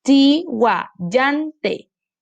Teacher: Yan sería nuestra sílaba tónica y todo lo demás sería nuestra sílaba átona.